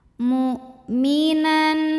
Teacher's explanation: Hamzah itu dari segi suara sifatnya sidah kuat ya tertahan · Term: syiddah